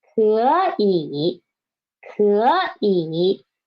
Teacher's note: when we put them together, we should change the first one into second tone